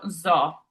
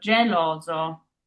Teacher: our singular S here sandwiched by two O's, which are vowels. So it's that Z sound, that zipper sound in English.